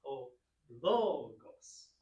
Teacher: And the accent is on the O, so it's O-logos.